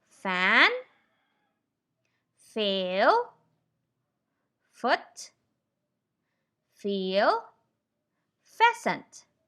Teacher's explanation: touch your bottom lip to your top teeth and then gently release air from between your teeth and your lower lip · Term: f sound